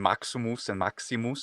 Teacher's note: it was an oo before because it was switching from u to e it was fronting